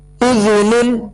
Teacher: دال کو نرمی کے ساتھ ادا کریں گے، اس میں سیٹی کی آواز پیدا نہ ہو.